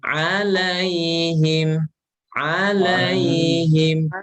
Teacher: Alai itu dia lin ya, lin. Iya, sukun sebelumnya fathah itu lin. Dibaca lembut aja, Pak. Dibaca lembut.